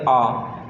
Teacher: जब हम आ का उच्चारण करते हैं तब हमारा मुख है वो पूरा खुल जाता है। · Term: विवृत स्वर